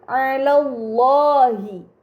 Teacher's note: maka lam pada lafaz Allah dibaca secara tebal